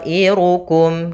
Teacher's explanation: Yaitu di sini ada alif berupa huruf mad datang setelahnya hamzah, dan hamzah tersebut terletak pada satu kata. Maka to yang awalnya 2 harokat berubah menjadi 4 harokat disebabkan karena adanya hamzah. Maka panjangnya adalah 4 harokat. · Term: mad wajib muttasil